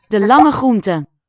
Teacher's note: It's hard to really hear the r as continuing as a separate segment, as a distinct one. I think they will have assimilated, so it could just be a long fricative.